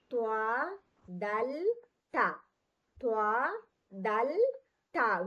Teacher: জিহ্বার আগাটা আমাদের উপরের দাতের গোড়ার সঙ্গে লাগে ত দাল তা উচ্চারণ হবে আমরা তকে মোটা করে পড়ব ত এবং তা পড়ব তা পাতলা